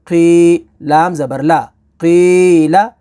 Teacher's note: قوف کو پر پڑھیں گے، یہ حروف مستعلیہ ہے